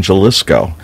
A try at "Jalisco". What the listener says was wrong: Jalisco with H. Jalisco.